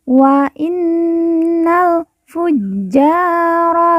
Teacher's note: Jim yang bertasdid kita baca ditekan dan ditahan dua harakat kemudian ja kita baca panjang dua harakat karena di depannya terdapat